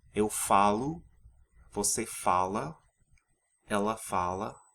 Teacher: the final vowels of the eu, você, and third person singular forms are weakened to the u and a sound because they're unstressed. So what you usually hear is eu falo, você fala, ela fala, etc.